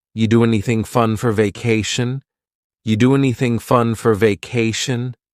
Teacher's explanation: We link together doing because we're going to drop the g. It ends with the sound n, the n sound. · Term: dropping linkings